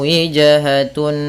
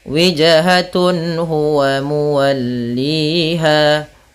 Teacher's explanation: Maksudnya apabila ada nun sukun atau an, in, un bertemu dengan huruf halqi yaitu huruf tenggorokan, salah satunya huruf ha, maka dia harus dibaca dengan jelas suara tanwin atau nunnya. Dan tidak boleh ditahan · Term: izhar halqi